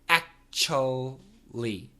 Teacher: However, most Americans just say it in 3 syllables, actually. But the CH is strong. This is a ch sound. There's no vibration.